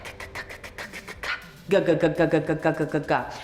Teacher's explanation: back of the tongue connects to the soft palate at the back here.